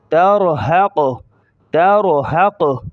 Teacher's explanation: اور قاف کی پیش کو ظاہر نہیں کریں گے اسٹاپ کے وقت